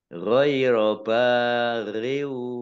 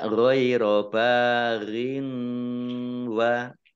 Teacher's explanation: tidak mendengung n tetapi mendengungnya wawu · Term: idgham bi gunnah